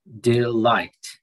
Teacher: The accent should come on the second syllable.